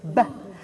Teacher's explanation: The b you can't hold on to, can you? It's a short sound. It's a little bit like a drum beat